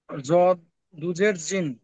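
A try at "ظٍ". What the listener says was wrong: ওটা জদ নয়, ভ।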